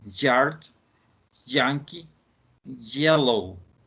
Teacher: It's called palatal because sounds are formed by the middle of the tongue up against the hard palate. You need to curve your tongue and press your hard palate and say yard, yankee, yellow. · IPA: /y/